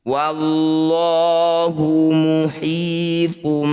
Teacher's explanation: dumah tanwin bertemu ba disebut bacaan iqlab iqlab artinya menukar jadi dumah tanwin kita tukar bunyinya dengan mim